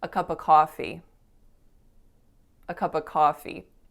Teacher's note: i was saying the word of in its reduced form so very often instead of of you're going to hear native speakers saying a really quick up